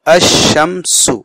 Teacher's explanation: لکھنے میں تو لکھا جائے گا الف بھی لام بھی، لیکن لام پڑھا نہیں جائے گا، الف کو سیدھا سے شین سے ملائیں گے اشمسو، اور شین مشدد ہو کر کے دو مرتبہ پڑھا جائے گا. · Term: حروف شمسی